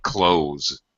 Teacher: most English speakers pronounce clothes uh with Z · close the window I'm wearing clothes it sounds exactly the same you don't even hear a th sound at all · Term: z sound